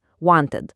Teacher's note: O jeigu pats žodis baigiasi ta arba d kaip want, tada pridedame visą skiemenį id